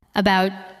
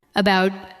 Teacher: We do not usually say every part with equal strength. We say about with a light first sound and a stronger second part.